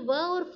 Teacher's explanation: वह बोलते समय हम दोनों होंठों को स्पर्श नहीं कर रहे निचले होंठ और ऊपरी दांत ओं का स्पर्श करके यह व्यंजन बोल रहे हैं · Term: दंतोष्ट